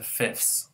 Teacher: even English speakers will often reduce this to fifths, and will drop that th sound because it's hard to say